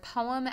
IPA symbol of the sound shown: p